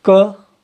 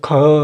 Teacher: क बोला मैंने अल्प हो गया, ख आवाज़ बहुत ज़्यादा आई तो क्या बोलेंगे महाप्राण